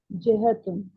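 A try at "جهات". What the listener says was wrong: جہاتن. جہتن. جہاتن. ہا کو لمبا کرنا ہے. یہ لگایا ہوا ایک کے اوپر ایک کے نہیں لگایا. جہاتن.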